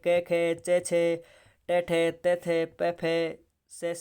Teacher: जिन ध्वनि के उच्चारण में गूंज कम होती है उनको तो अघोष कहते हैं।